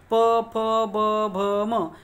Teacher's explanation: प फ ब भ म याचा उच्चार करते वेळेस आपले जे काय ओठ आहेत एकमेकाला लागतात, म्हणून हे तुम्हाला ओष्ठ हे सहज तुमच्या लक्षात येणार आहे.